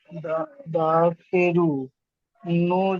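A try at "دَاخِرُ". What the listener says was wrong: দাখিরু না, টান হচ্ছে না, দাখিরু না। খজের খি টান হবে না, দাল আলিফ জাবার দা, এখানে টান হবে দা।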